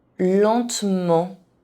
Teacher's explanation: the consonant N doesn't count because it is part of a nasal vowel and it isn't pronounced like a consonant